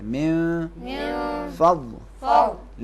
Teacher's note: نون فے کے نزدیک اخفا کریں گے